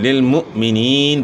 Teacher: حمزہ ساکن کی وجہ سے حمزہ ساکن میں جھٹکا ہوگا